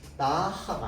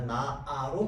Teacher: 히읗이 그대로 있어요. 그런데 발음상으로는 탈락되어 가지고 나하가 아니라 나아로 발음되게 됩니다. 히읗은 온데간데 없이 사라져요. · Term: 히읗 탈락